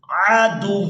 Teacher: اب یہاں پر ہم نے کرنا ہے وقف، تو وقف کی صورت میں واو مشدد کے اوپر جو دو پیش ہیں اس کو ہم نے ادا نہیں کرنا